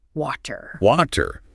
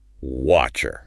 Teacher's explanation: The throat closes right where the T should be. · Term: glottal stop